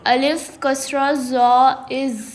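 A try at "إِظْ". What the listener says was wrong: Okay, also these two letters has no whistle sound. You have to read with soft and read carefully. Alif, kasra, wa, il. Il. No whistle sounds. Read with soft and without whistle sound.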